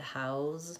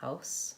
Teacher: You should be able to hear and differentiate that house, my voice is on, and house, my voice is not on. Otherwise, those two are the same.